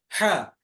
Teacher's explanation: হলকের মাঝখান থেকে হা হয়।